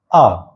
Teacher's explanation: आ वर्ण का आप जैसे ही उच्चारण करोगे तो आपका मुख पूरा खुलेगा